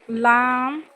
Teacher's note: জিহ্বার আগা উপরের দাঁতের গোড়ার সাথে লাগায় কি উচ্চারণ হবে?